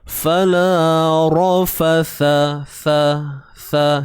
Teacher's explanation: keluarkan sedikit hujung lidah kita ketika menyebut huruf sa ni